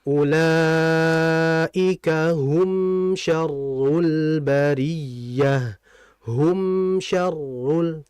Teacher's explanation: rapatkan bibir sedikit dialirkan dengan dengungan yang ada tawasnya baru kemudian dilepas. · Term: mim mati, Mim mati